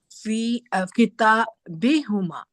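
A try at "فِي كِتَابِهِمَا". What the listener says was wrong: It should be fi kitabihima. Fi kitabihima. Fi kitabi. There should be also a kasra.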